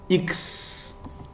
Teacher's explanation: like you're saying S, but you put the K before the S.